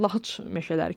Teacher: lahacadan sonra meşə samitlə başlayan söz gəldiyinə görə c hərfi ç kimi tələffüz olunacaq